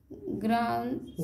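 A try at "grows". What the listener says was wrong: ग्राउंड नहीं एन नहीं है उसमें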